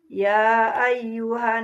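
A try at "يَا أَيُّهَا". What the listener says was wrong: Kurang panjang ya 5 harakat.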